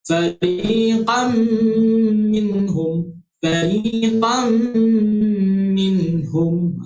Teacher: Jadi macam mana kita nak cara bacaannya, iaitu memasukkan daripada huruf qaf terus ke huruf mim dengan dengung sebanyak 2 harakat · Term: idgham ma'al gunnah